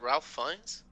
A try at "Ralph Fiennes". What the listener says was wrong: There is an L, but it is pronounced Rafe.